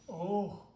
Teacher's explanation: it's not a full syllable, it's a half syllable. So it's like just an after breath, and it's almost like you have to hold your breath. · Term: Visarga